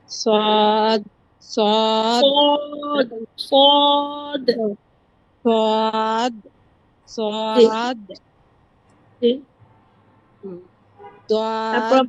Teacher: জিহবার আগা সামনের নিচের দুই দাঁতের পেট ও আগার সঙ্গে মানে জিহবাটা নিচা করে নিচের দাতের সাথে জিবাটা লাগাবেন